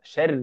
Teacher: حرف الراء مشدده لكن تحتها كسره فهذه الراء مرققه